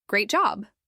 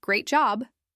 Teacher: if someone says, Great job, with a happy tone, that's one meaning. But if they say, Great job, with a flat or annoyed voice, that could mean the opposite. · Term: emotional tone